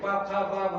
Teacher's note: उसके बाद प वर्ग ओठ से प फ ब भ